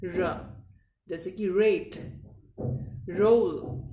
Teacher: हिंदी का र बिल्कुल शुद्ध र उच्चारण है, लेकिन इंग्लिश का जो आर का उच्चारण आप लेंगे वो होगा हल्का सा जबान को घुमाकर, यानी कि रोल करके